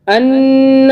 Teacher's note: نون کے اوپر ہم نے تھوڑا سا غنہ کیا کہ نون کے اوپر تشدید ہے